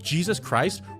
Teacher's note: two fricatives in a row in Jesus getting snapped with the hard C Sound in Christ then the stop of the T doesn't let it hang it's